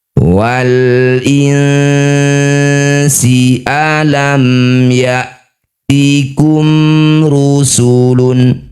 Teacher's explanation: Cara membacanya bunyi nun dengungkan dua harakat. Ketika dengung lisannya sudah bersiap bunyikan sin. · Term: ikhfa